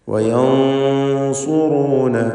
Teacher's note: സക്നത്തായ നൂനിനെ ശേഷമുള്ള സ്വാദ് വന്നതുകൊണ്ട് ഇഖ്ഫാ ഹഖീഖി നൽകി മറച്ചു മണിച്ച് തഫ്ഖീമോടുകൂടി ഉച്ചരിക്കണം. സ്വാദ് ഇസ്തിഅലാഇൻ്റെ തഫ്ഖീം ചെയ്യേണ്ട അക്ഷരമാണ്, സ്വരഭാരത്തോടെ തടിപ്പിക്കേണ്ട അക്ഷരമായതുകൊണ്ട് മണിക്കലിലും ആ തടിപ്പിക്കൽ തഫ്ഖീം ഉണ്ടാവണം.